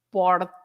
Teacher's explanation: You don't roll the R. It's just porta. We say this light sound.